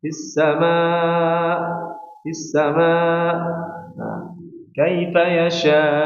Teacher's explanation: Huruf hamzah harus tidak ditekan. Huruf hamzah hanya sekedar dilepas saja.